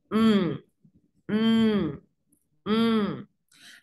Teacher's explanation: La nasal bilabial, entendemos que solamente intervienen lo que son el labio inferior y el labio superior.